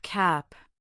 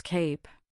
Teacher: That a has a short clipped sound. But add a silent e to the end and it becomes cape. The a now says its own name transforming into a long vowel.